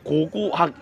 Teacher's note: 앞에 나오는 고는 VOT 값이 양수인 무성음고 뒤에 나오는 고는 VOT 값이 음수인 유성음고다